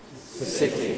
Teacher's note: the tongue tip on the alveolar ridge, making alveolar consonants, voiceless, plosive, city.